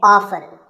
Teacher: the more common pronunciation is with the t silent